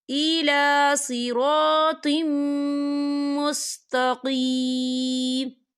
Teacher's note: میم جو ہے حروف یرملون میں سے ہے، تو یہاں پر ادغام ہوگا اور ہم اسے غنّے کے ساتھ پڑھیں گے